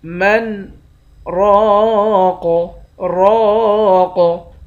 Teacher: را کے بعد الف ہے، الف حروف مدہ ہے، 1 الف کی مقدار کھینچ کر پڑھیں گے، آخر میں قاف ساکن ہے۔ قاف پر جب وقف کریں گے تو قاف پر قلقلہ کریں گے۔ · قاف پر جب وقف کریں گے تو قاف پر قلقلہ کریں گے۔ من راق، راق، وظن انه الفراق، وا کو موٹا پڑھیں گے، دونوں نون مشدد پر غنہ کریں گے۔